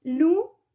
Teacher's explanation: Lucía lleva acento prosódico en la I y por lo tanto rompe el diptongo y genera un hiato. Entonces queda una palabra de 3 sílabas.